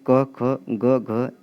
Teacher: क वर्ग का जो उच्चारण स्थान होता है वह कंठ से होता है